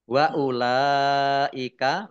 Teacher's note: lam fathah berdiri mat tabi'i, tetapi karena bertemu dengan huruf alif dalam satu kata, maka menjadi mat wajib muttasil. Dibaca panjang harus 5 harokat.